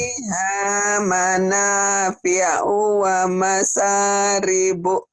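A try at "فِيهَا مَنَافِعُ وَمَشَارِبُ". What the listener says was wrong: Dihentikan ujungnya wa masyarib. Emang U-nya panjang, Bu? Panjang pendek ya U-nya? Kenapa dibaca panjang? Shin-nya gede ya, Bu ya? Fiha manafi'u wa masyarib. Fiha manafi'u wa masyarib.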